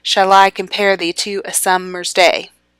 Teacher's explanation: that is a pentameter it has five down beats